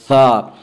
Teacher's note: ثا کو نرمی سے پڑھیں گے، ثا کا مخرج زبان کی نوک اور ثنایا علیہ کا کنارہ